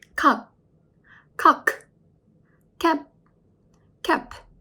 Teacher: Koreans think the sound and mouth must be shut at the end of the syllables. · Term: final consonant